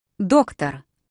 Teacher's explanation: The stress goes on that first O.